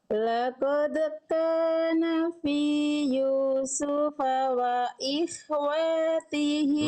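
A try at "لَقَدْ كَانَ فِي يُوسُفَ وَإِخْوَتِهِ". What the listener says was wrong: Nah, ikhwatihi, watihi, wawnya kepanjangan.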